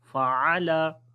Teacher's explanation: फ़अला किसी हर्फ को लंबा नहीं करेंगे, आइन को गले के दरमियान वाले हिस्से से पढ़ेंगे